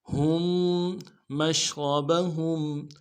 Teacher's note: میم کو شین کے ساتھ ملانا ہے، اگلے میم کو شین کو واضح کریں گے، را کو موٹا کریں گے، با کو نرم سے ادا کریں گے، ہا کو میم ساکن کے ساتھ ملانا ہے، میم کے ساتھ ملانا ہے، میم ساکن ہے غنہ کریں گے